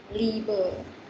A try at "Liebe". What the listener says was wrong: Ini IE ya, bukan EI. Kalau IE dibacanya I-nya agak panjang. Liebe.